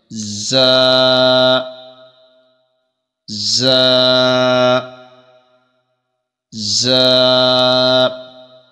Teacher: زا کا مخرج اس طرح ہے کہ زبان کی نوک اور دونوں دانتوں کے اندرونی کنارہ سے یہ ادا ہوتا ہے، اور اس کے اندر تھوڑی سی سیٹی کی بھی آواز آنی چاہیے